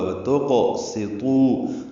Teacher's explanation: تو کو لمبا کریں گے، واو مدہ کے بعد حمزہ دوسرے کلمے میں ہے، اس لیے مد منفصل ہے